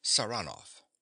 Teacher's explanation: He pronounces the name with a stress on the second syllable.